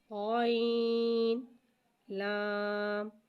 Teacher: غین حرف مستعلیہ لہذا ایسے ہم موٹا پڑھیں گے، غین کی آواز حلق سے ادا ہوگی۔